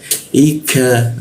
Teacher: Jadi cara membacanya fa'ula, i masuk ke i, hamzah dia, i di tenggorokan bagian bawah, i ka masuk ke ka ya, ka di siku tenggorokan, lidahnya kita turunkan sehingga ada rongga udara terbuka ya. Jadi ka-nya itu ada hembusan udara dia